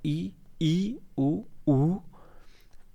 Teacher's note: संवृत उन स्वरों को कहा जाता है जिन स्वरों के उच्चारण में मुख द्वार लगभग बंद रहता है।